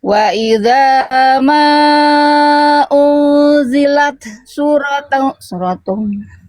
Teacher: di sini tanya dipercikan dulu Bunda, jangan diidgomkan ke sini jadi unzilasu, jadi kayak nggak ada taknya. Taknya dipercikan dulu.